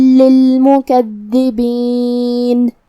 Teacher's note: حرف الدال کی تشدید کا دھیان رہے، 2 حرف کے برابر ہمیں دال کو پڑھنا ہے. آخر میں نون پہ رکیں گے تو اس پہ جزم سے رکیں گے، لہذا ہم نون کو ظاہر کریں گے.